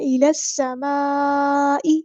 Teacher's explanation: سیٹی واضح کرنی ہے، حمزۃ الوصل ہمارا ڈراپ ہو جائے گا، لام جو ہے نا یہاں پر لام شمسیہ ہے تو اس کی آواز کو ظاہر نہیں کرنا · الى السماء یہاں پر ہمارے پاس کنیکٹڈ مد آ گئی ہے، مد متصل 4 یا 5 کاؤنٹ ہم نے اس کو لمبا کرنا ہے ، حمزہ کی آواز کو واضح ادا کرنا ہے، الى السماء